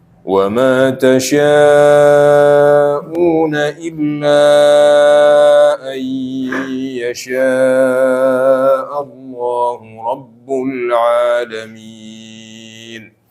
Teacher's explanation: mad yang tasyaa'una ay yashaa'u itu 4 harokat. 4 sampai 5.